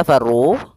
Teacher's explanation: ada mad tabi'i, yaitu dhammah bertemu dengan waw